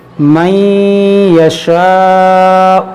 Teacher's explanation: نون ساکن کے بعد یا ہے، یہاں پر ہم ادغام کریں گے، نون کو ہم یا میں داخل کر کے غنہ کریں گے